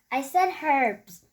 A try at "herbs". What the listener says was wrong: No, herbs. That is silent H. Right, Daddy? Herbs is silent H.